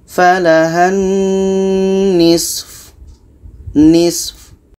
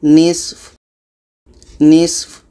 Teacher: Di sini so mati, fu ini pendek, maka kita matikan juga. Maka di sini ada dua huruf yang mati, so dengan fa. Dua-duanya tetap kita baca.